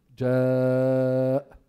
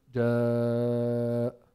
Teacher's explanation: we prolong it either four counts or five counts · you have to prolong it more than two harakas. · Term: mad muttasil